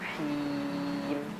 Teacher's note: Nah, hi-nya jangan sampai masuk hidung.